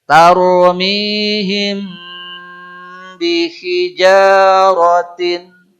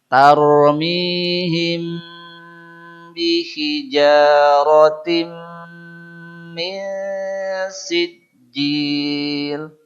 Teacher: Intinya kita disuruh agak lama membaca em-nya. Ya. Dan huruf em tidak bisa lama kecuali balem. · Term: mim kondisi ikhfa